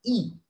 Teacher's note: And then there's the front close vowel, E.